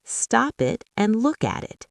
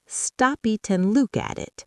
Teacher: The P jumps to the I, the T jumps to the A, the K jumps to the A, the T jumps to the I.